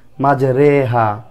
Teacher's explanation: কোরআন মাজিদের এক জায়গায় শুধুমাত্র এক জায়গায় জের এই জেরকে এককার উচ্চারণ করতে হয়